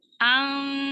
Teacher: Tahan lagi gunahnya, ikhfa'nya, gunah kamilah. Lamain lagi dengung ikhfa'nya.